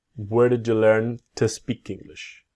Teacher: so the to becomes a t